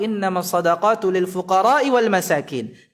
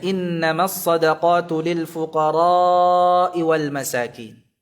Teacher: dengan memanjangkan kata fuqara'nya lebih dari 2 harakat